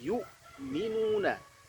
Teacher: hamzah punya sifat jahar, tidak ada nafas yang mengalir.